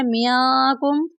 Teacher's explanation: نون ساکن پر اخفا کریں گے۔ اخفا کا مطلب ہے ناک میں آواز کو چھپانا۔ کاف کے بعد میم ساکن ہے اور اس کے بعد پھر میم مشدد ہے۔